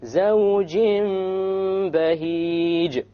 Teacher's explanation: We have a Tanween followed by a Ba. So we convert the noon into a meme.